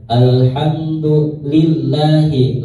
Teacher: lafaz Allah dibaca tarkik atau tipis